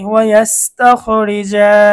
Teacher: র এর নিচে জের হওয়ার কারণে র চিকন হবে, 7 নং সূত্রে আমরা দেখেছি।